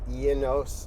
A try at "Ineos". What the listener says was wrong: You say Unos, like a Unos Roadster.